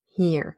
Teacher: The idea is that if you want to pronounce a pink sound, a short high front vowel, and an R together, you will have a bit of a murmuring in between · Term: post-vocalic R